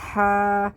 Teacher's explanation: ہواؤں کے شور کی آواز آنی چاہیے. ہا کھڑا زبر ہا.